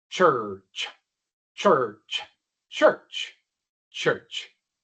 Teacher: Y como dije, no se preocupen por la u, cómo pronunciarla. Solo hagan el sonido de la ch seguida inmediatamente por el sonido de la R.